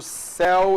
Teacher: Céu é o e aberto. Vé é o e aberto. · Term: ditongo aberto